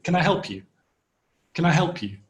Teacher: And the stress is on the word help, not on the modal verb, can. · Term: unstressed